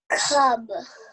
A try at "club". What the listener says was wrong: There's an L. Can you say the L? Club. Club.